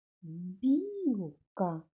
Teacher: Білка перший звук у цьому слові бі. Він приголосний, м'який.